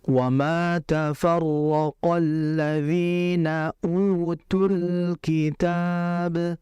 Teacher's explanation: Lam mati di situ adalah lam takrif yang dia adalah izhar al-qamariyah. Izhar alqamariyah maksudnya adalah al-nya dibaca jelas dan dialirkan. Karena lam mati itu lam memiliki sifat tawassud.